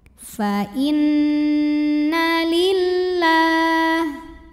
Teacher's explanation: Kemudian ada hukum gunnah musyaddadah karena nunnya bertasydid. Cara bacanya dengung, bunyiannya tahan sampai ada suara masuk hidung